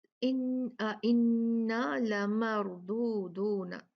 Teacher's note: را ساکن ہے، اس سے پہلے حرف پہ میم پہ فتحہ ہے، زبر ہے، تو را ہیوی ہوگی، بھاری ہوگی۔